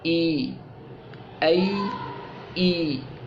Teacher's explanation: یہ وسط زبان اور وسط تالو سے یہاں پر ادا نہیں ہوتی، کیونکہ یہ مدہ بن گئی ہے۔ ٹھیک ہے، حرف کو لمبا کرنا مجبوری بن جاتا ہے جب یہ ایسی حالت میں ہوتی ہے، تو یا ساکن ہو تو پھر اس کا یہ مخرج نہیں رہتا۔